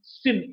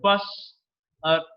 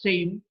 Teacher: The sa is a voiceless alveolar fricative. Voiceless because the vocal cords are held apart from each other.